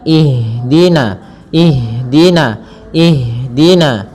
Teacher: Ha ada salah satu sifat yang dia harus kita lafalkan ketika membacanya itu sikap eh maaf sifat hames. Hames artinya mengalir nafas kita. Mengalirnya nafas kita. Maka jangan sampai huruf ha ini memantul.